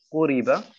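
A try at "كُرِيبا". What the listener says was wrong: Jetzt ist wieder der K rausgekommen. Ku. Kuriba.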